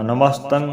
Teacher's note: ਤਤੇ ਨੂੰ ਟਿੱਪੀ ਲੱਗੀ ਹੈ। ਇਹਨੂੰ ਨਮਸਤੰਗ ਨਹੀਂ ਬੋਲਣਾ ਨਮਸਤੰ ਬੋਲਣਾ